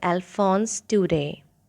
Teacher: Do not pronounce Daudet because in French we do not pronounce the last consonant